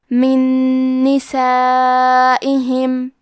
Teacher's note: نون میں ملا کے ایک ہی نون غنہ اور تشدید کے ساتھ پڑھیں گے۔